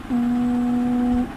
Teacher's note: واو ساکن ہے اس سے پہلے پیش ہے تو یہاں پر واو مدہ کا قاعدہ بن رہا ہے اس لیے اسے ہم ایک الف یعنی 2 حرکات کے برابر کھینچ کر پڑھیں گے